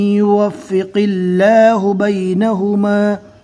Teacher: یہاں پر اللہ کے لام کو باریک پڑھا جائے گا۔